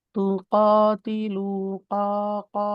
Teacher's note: মুখটা গোল হয়েছে, আর এই কফ কাসরাটা একটু কাফের কাছে চলে গেছিল